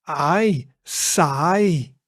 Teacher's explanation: the i sound is a combination between the a sound and the e sound. So that becomes i.